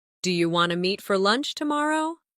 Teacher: In casual speech, do you want to often sounds like do you wanna?